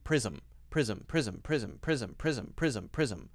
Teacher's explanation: It doesn't always work, but generally speaking, at the start, unvoiced S sound, at the end, voiced S sound as Z with no space between the Z sound and the M sound